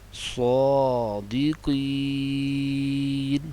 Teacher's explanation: مد عارض کو 3 الف کھینچ کر پڑھیں گے، لمبا کر کے پڑھیں گے